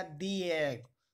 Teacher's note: तो वोवल होने पर ये दी का प्रोनाउंस करता है।